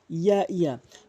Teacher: উচ্চারণ হয় জিহ্বার মাঝখান উপরে তালুর সঙ্গে